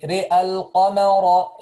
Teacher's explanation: So we make imala only for the ra.